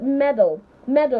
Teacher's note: Medal, because they both have the schwa sound and not ah